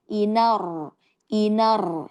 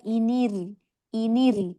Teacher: Kalau dia di bawah inir inir. Jadi ujung lidahnya tidak terangkat ke atas lagi tetap getar dia di bawah. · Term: roh tipis